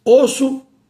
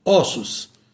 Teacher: Isso aqui chama-se plural metafônico. Quando a palavra está no singular, o permanece com timbre fechado. Quando está no plural, passa para o timbre aberto.